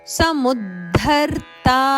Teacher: ಮೂ ಮೇಲೆ ಮೇಲೆ ಆಘಾತ ಇದೆ ಮುಂದೆ ಬರುವ ಅಕ್ಷರ ದ ಅಲ್ಪಪ್ರಾಣದಕ್ಕೆ ಮಹಾಪ್ರಾಣದ ಒತ್ತು